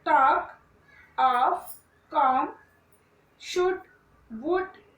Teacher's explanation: There is no L sound in these words.